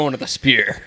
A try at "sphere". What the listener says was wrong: Did you call it the spear? It's the sphere. The P is silent, bro. It's sphere. Sphere.